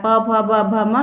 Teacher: तो यहाँ पे फा का जो उच्चारण स्थान है वो आपके ओष्ठ से होता है। प भ ब भ म सारे के सारे जितने भी हैं वो ओष्ठ से उच्चारित होते हैं।